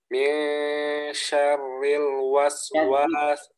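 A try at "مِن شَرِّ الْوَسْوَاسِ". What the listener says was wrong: Syarri. Itu masih tebal. Ya, masih tebal. Syarri. Dua-duanya tipis. Jadi jangan pas misalnya syarri itu kan dia ada dua roh. Antum itu tadi pas masuk roh pertama tebal, syar. Ketika roh kedua tipis, ri, syarri.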